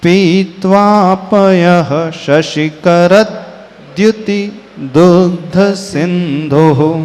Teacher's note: द और य मिलकर के द्य बना, तो शशिकर के बाद थोड़ा सा एक्स्ट्रा द का उच्चारण आएगा